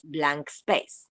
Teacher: when the air is released the air escapes laterally so through the sides of the tongue